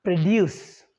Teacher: The second syllable is stress when it's verb.